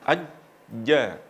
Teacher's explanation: Huruf jim itu makhrajnya ada di tengah lidah mengenai langit-langit. Jadi kalau misalnya ini tengah lidah kemudian di tengahnya pas langsung ke langit-langit. · ketika melafalkan aj, otomatis lidah langsung menempel ke langit-langit, yaitu bagian tengah